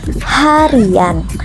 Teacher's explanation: akan muncul bunyi pelancar seperti Y apabila sebuah kata yang berakhiran dengan bunyi I diberikan sufiks an di akhirannya.